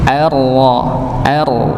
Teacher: ini ra-nya ditebalkan. Hamzahnya tipis.